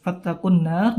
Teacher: nun bertasydid ya, diingat panjangnya ya gunnahnya maksudnya